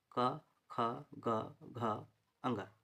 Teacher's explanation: ख व्यंजन का उच्चारण स्थान क्या हो जाएगा, क, ख, ग, घ, अंग, और इसको बोलते हैं कंठव्य।